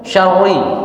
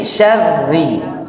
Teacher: Min syarri, rinya tipis ya, jangan sampai syarri ya, tapi syarri tipis